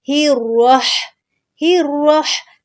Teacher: اب ہا کو را کے ساتھ سختی سے ملائیں گے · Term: تشدید